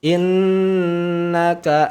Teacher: Nun tasdid didengungkan ditahan dua harakat